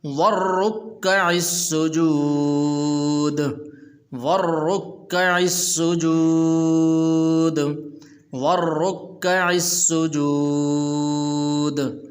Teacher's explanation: را کے اوپر پیش ہے، اس کو پر بھی کرنا ہے